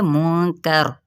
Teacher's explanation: रा यहाँ पे अब पुर पढ़ा जाएगा, क्योंकि रा साकिन हो जाएगा तो मा कबल क्या है, ज़बर है, तो यहाँ पे रा की क्या है ये हालत, यहाँ पे इसकी हालत ये बनती है कि रा पुर पढ़ा जाएगा, हालांकि नीचे ज़ेर है, लेकिन वक्फ करेंगे तो पुर, अदरवाइज हम इसे बारीक पढ़ते हुए आगे जाएंगे, ठीक है।